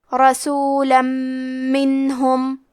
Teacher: ہم تنوین کو میم میں ملا کے غنہ اور تشدید کے ساتھ یہ حکم کو ادا کریں گے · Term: ادغام بغنہ